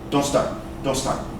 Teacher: Those are real strong sounds. So the strong N takes away this T when you say it fast. · The T sound disappears when you say it fast because it is a weak sound.